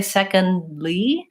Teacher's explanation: There's no break between the D and the L. So basically that's what's called a stopped D. · But when I say secondly, instead of releasing the D, secondly, and bringing my tongue back up for the L, I go right from the D sound, secondly, into the L sound. So my tongue does not release, and therefore you don't hear the release of the D. And so I'm making a D, but I'm not releasing it.